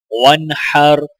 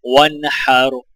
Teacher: نون کے آگے حروف ہلکی ہائے لہٰذا نون پر غنہ نہیں کیا جائے گا